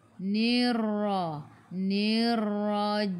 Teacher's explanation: Selepasnya ada sabdu, tekan ke dalam ra dan huruf ra ada takrir. Sifat hurufnya takrir, kena ada getaran Ra baca dengan tebal, ra baris atas tafkhim.